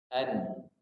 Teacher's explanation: Nun makhrajnya ujung lidah bertemu dengan langit-langit depan